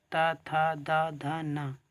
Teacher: दंत व्यंजन है जिनमें जीभ जो है तुम्हारी वो दांतों में टकराएगी